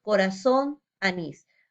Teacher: Vemos que la mayor fuerza de voz está en la última sílaba, son y nis. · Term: aguda u osítona